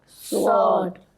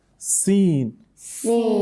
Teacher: sword it comes out heavily because while pronouncing sword, the back of your tongue rises up, whereas in that of sin, it doesn't do so